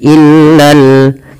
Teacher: lam yang kedua dibaca dengan jelas karena di sini ada alif lam qamariah yaitu alif lam yang ditulis dan dibaca dengan jelas Fa Mad